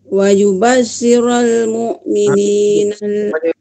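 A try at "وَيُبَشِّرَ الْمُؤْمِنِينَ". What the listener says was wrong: Itu situ ibu terus masuk. Wa yubashshiral terus masuk. Kalau ibu lambat masuk dia macam lain bunyi dia. Terus masuk wa yubashshiral mu'minina allazina ya'maluna as-solihati anna lahum ajran hasana.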